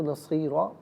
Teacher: وقف نہیں کریں گے تو تب بھی پر پڑھیں گے، اور 2 زبر کی تنوین وقف میں الف سے چینج ہو جاتی ہے تو اس وقت بھی را کو پر کر کے ہی پڑھا جائے گا